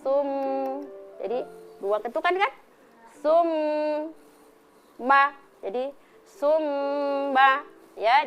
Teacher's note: Jadi dua ketukan. Kalau dia tidak ditahan selama dua ketukan maka itu tidak jadi gunah ya. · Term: mim tasdid